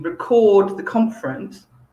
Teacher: if we use the same word as a verb, did you record the conference? Notice, did you record? I'm emphasizing the second syllable, record.